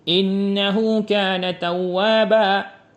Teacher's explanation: Kemudian berikutnya mad iwat yaitu penggantian tanwin nasab dua harakat dalam keadaan wakaf atau bacaan berhenti dengan huruf alif dan dibaca dengan panjang dua harakat